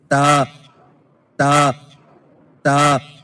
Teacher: زبان کی نوک کو سامنے والے اوپر کے 2 دانتوں کی جڑ سے لگا کر باریک آواز میں پڑھیں